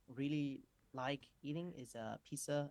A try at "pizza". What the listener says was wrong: Pizza. I only hear pizza. I don't hear the t there. Pizza. But it's only a one mispronounced word. It doesn't show a systematic error with pronunciation. It just shows that one word is mispronounced slightly. Does that mispronunciation impede understanding? Does it stop me from understanding what he's talking about? No.